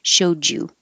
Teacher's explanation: And showed, showed you, the D and the Y will make a J.